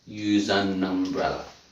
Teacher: I don't say at I say use an umbrella I say the schwa sound this is called a weak form